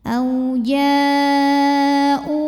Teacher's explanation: Mad tabi'inya alif sebelumnya fathah, hamzahnya yang u pada kata ja'u, ya. Maka jimnya dipanjangkan, boleh 4 boleh 5 harokat. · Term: mad wajib muttasil